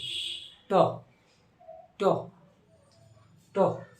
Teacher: কোথায় উচ্চারণ হচ্ছে, মূর্ধায়, অর্থাৎ তালুতে নয় কিন্তু মূর্ধা